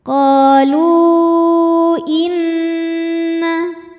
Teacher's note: maka lam dipanjangkan boleh empat boleh 5 harakat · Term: Mad Jaiz munfasil